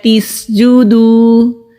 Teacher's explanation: واو ساکن سے پہلے پیش ہے تو یہاں پر واو مدہ ہے، ایک الف کے برابر کھینچ کر پڑھیں گے۔